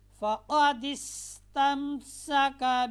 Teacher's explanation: سین کو ادا کرتے وقت آپ نے سیٹی بجانی ہے